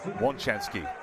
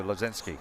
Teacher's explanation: it starts with an L with a line through it, and you automatically think it's a L sound, but actually it's the W sound. So that's why you say Łączewski as opposed to Lazinski.